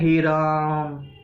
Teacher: जब हे राम लंबा बोला जाता है तो वो कौन सा स्वर होता है? प्लुत। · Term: प्लुत स्वर